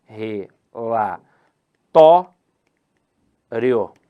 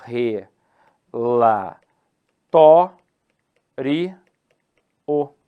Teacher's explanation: Mas se eu considerar uma proparoxítona eventual, aí eu vou separar assim, ó, re, lá, tó, ri, o. A sílaba tônica está no tó.